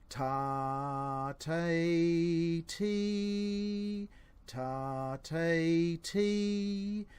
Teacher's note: You'll feel that the point of your tongue where it touches the roof of your mouth is slightly further forward as you go through those three syllables